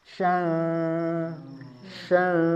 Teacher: Tengah lidahnya sudah naik tapi tidak ditempelkan. Kalau tempel jadi jim ya. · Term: huruf shin